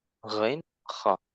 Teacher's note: Ghainun kha'u keluar dari tenggorokan atas ya. Adnal halqi ya.